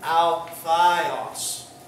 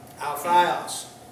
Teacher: The alpha iota diphthong makes the I sound, so it would be Alphios.